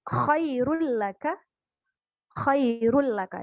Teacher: kalau yang idgham bilagunnah tidak didengungkan tapi hurufnya tetap masuk